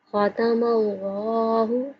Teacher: لفظ اللہ کو موٹا پڑھا جائے گا کیونکہ اللہ سے پہلے حرف کے اوپر زبر آ رہی ہے، اس لیے اللہ کا لام موٹا پڑھیں گے۔